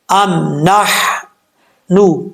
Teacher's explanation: یہ میم ساکن ہے، پڑھتے ہوئے میم میں کلکلا نہیں کرنا چاہیے